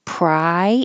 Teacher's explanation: There's an invisible Y here because when you say pry, your tongue goes very high.